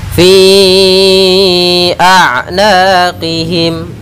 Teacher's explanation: Apabila dalam satu kata, kita namakan dengan mad wajib muttasil. Kita panjangkan untuk mad jaiz, yaitu 4 harakat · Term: mad jaiz munfasil